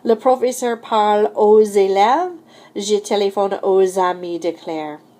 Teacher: There is liaison after O when the next word begins with a vowel sound, in which case you're going to hear that X as a Z.